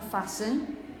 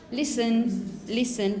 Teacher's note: You don't pronounce the T in the middle.